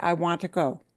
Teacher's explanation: That word to gets a reduction. That schwa is a reduction.